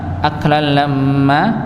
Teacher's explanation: alif itu akan hilang ya jika bertemu dengan tasydid